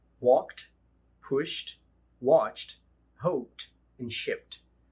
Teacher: Toda vez que nós tivermos um som de consoante surda antecedendo o ED final, isso quer dizer que o ED não será pronunciado como id, ele será pronunciado como se ele fosse um T. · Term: sonzinho de T